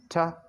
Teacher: there is a bump and at that position uh your tip of the tongue blocks airflow and suddenly release the airflow that develops the sound as ta and this is voiceless because